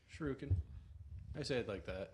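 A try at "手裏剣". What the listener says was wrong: There's no U after the R.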